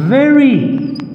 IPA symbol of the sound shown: v